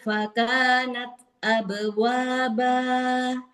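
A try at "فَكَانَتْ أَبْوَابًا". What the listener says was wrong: Taknya kasih hamasnya tampakkan. Jadi biar nggak hilang taknya. Fakanat nat kasih hamasnya. Kurang terdengar. Jadi kayak taknya kayak hilang. Fakanat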